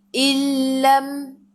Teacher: Idgham bila gunnah. Illam masuk tanpa dengung